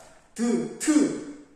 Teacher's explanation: 국외음이 아니라 치조음이잖아요. 드 해보면 드 이빨 바로 뒤에서 소리 나죠. 치조음이에요. 치조. 이빨 쪽에서 골라서 나는 소리.